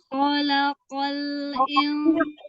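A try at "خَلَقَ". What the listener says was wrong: Sama kof itu tebalnya sama. Yang kholaqo, kho. Kholaqol. Nah, samain.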